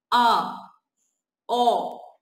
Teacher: विव्रत का हमारा मतलब होता है कि इसमें मुंह क्या होता है? ज्यादा खुलता है, यानी विविर जो होता है मुंह विविर खुला रहता है ज्यादा।